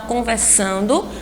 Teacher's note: a sílaba mais forte é a penúltima sílaba